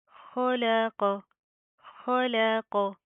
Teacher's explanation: खो और कौफ, इन दोनों को मोटा पढ़ा जाएगा प्रॉपर, और दरमियान वाला लाम बारीक होगा, ठीक है। इस चीज़ का आपने ख्याल करना है कि इन दोनों की अदायगी करते हुए लाम को आपने मोटा नहीं पढ़ना।